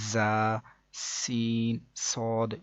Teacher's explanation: ان 3 حروف یعنی کہ زا، سین، صاد کو ادا کرتے وقت سیٹی کی طرح کی آواز نکلتی ہے، اس لیے ان حروف کو حروف صفیریہ یعنی سیٹی والے حروف بھی کہتے ہیں.